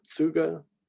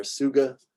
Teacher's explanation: Roll them together. Some people might just go with the S sound there.